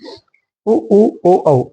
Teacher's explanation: होट गोलाकार आकृति बनाते हैं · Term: वृत मुखी